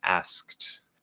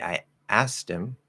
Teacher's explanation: usually what we're going to do in normal speech is we're actually going to drop the K